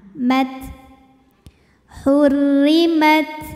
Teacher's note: untuk ta yang sukun, hamsnya keluar anginnya belakangan